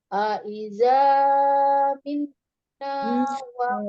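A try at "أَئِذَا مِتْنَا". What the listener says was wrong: Tidak terlalu panjang, azannya tidak. Aiza kepanjangan, Umi. 2 harokat saja. Aiza mitna.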